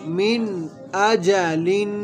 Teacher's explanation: نون ساکن کے بعد حروف حلقی میں سے حمزہ آ رہا ہے تو اظہار ہوگا، یعنی غنہ نہیں کریں گے